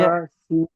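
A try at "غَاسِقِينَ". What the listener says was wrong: হ্যাঁ, গ সে কিন, গয়ন আলিফ জবর আছে, আলিফ মাদ্দা হবে। না, আলিফ মাদ্দা আছে, আপনি ভুলে গেলেন নাকি? আলিফ মাদ্দা, আলিফের ডান দিকে জাবার আছে, একে আলিফ মাদ্দা বলে। আলিফ মাদ্দাকে এক আলিফ পরিমাণ টান দিয়ে পড়তে হয়। গইন আলিফ জাবার গ।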